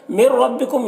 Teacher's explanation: مر ربکم یہاں پر نون ساکن کے بعد را ہے حروف یرملون میں سے، تو ادغام تام ہوگا، نون کو را سے ملا کر بغیر غنہ کے پڑھیں گے، را کو یہاں پر پر پڑھیں گے۔